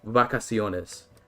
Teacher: it's the lips together with continuous airflow slightly open, as opposed to top teeth to bottom lip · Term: bilabial fricative